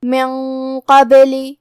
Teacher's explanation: قاف حروف الاخفاء میں سے ہے تو ہمیں نون کو چھپاتے ہوئے اور غنہ کے ساتھ یہ حکم کو ادا کرنا ہے کیونکہ قاف حروف التفخیم میں سے ہے اور غنہ اپنے اگلے والے حرف کا حکم لیتا ہے تفخیم میں اور ترقیق میں تو ہم یہاں غنہ کو بھی بھاری آواز میں ادا کریں گے